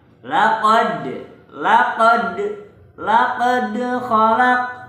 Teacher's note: Laqad itu harus memantul karena hukum bacanya adalah qalqalah